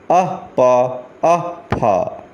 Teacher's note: ओष्ठों से बोले जाते हैं, ओष्ठ से बोले जाते हैं। ओष्ठो, ओष्ठो ये द्विवचनांत है और दो है अपर और लोअर, तो दोनों के सहयोग से बोला जाता है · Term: उपधमानीय